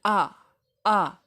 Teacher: جو حمزہ ہے یہ حلق کے نیچے والے حصے سے ادا ہوتا ہے۔ اس کا جو مخرج ہے وہ حلق کا نچلا حصہ ہے، تو حلق کے نیچے والے حصے سے حمزہ زبر آ اور او ہے جو عین، یہ حلق کے درمیان والے حصے سے ادا ہوگی۔